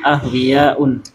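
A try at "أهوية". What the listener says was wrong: Bukan hamzah. Iya, ahwiyatun pendek.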